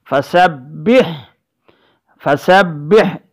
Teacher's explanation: سین کے بعد با مشددہ ہے، یہاں پر ٹھہراؤ ہوگا ہمارا، تاکہ با مشددہ صحیح معنوں میں ادا ہو سکے